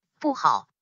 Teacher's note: 不 remains in fourth tone, as 好 is in third tone.